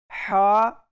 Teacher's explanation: हा इसको हम हलक से पढ़ रहे हैं